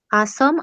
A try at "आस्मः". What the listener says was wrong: हा, आस्मः, आस्वः न, आस्व, आस्म इत्युक्ते विसर्गः नास्ति।